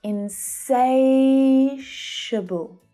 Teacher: The second syllable is the stressed one. · Hear how low in pitch those last two syllables are?